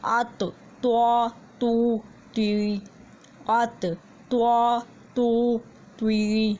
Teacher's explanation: آگے تو بھی اسی طرح سے ادا ہوگا جب زبان کی نوک سامنے والے 2 دانتوں کی جڑ سے لگے گی، لیکن تو جو ہے اس کو تھوڑا سا یعنی کہ موٹا پڑھنا ہے، اور اس لیے جو زبان کی نوک کے ساتھ یہاں سے بھی جس طرح تصویر میں دکھائی دے رہا ہے سرکل کیا ہوا، یہ بھی تھوڑا سا اوپر کی طرف ہوگا۔